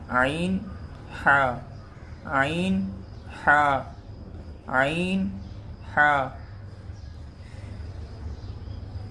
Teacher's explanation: یہ دونوں حروف حلق کے بیچ کا جو حصہ ہے وہاں سے ادا ہوتے ہیں۔